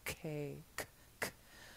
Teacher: So the advice I give my students is that with a K, you're completely closing the air when you make contact between the top of your tongue and the top of your mouth